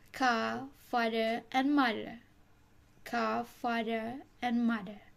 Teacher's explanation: car, father, and mother are often pronounced without the extreme R sound and would be pronounced as ka, father, and mother. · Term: non-rhotic